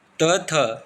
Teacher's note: त थ पहला दूसरा अघोष व्यंजन होते हैं